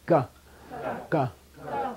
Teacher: It's guttural. It's coming from back. But what's closing is the back of your throat. Feel it. Ka.